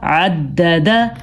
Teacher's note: دال پہ جھٹکا پیدا ہو رہا ہے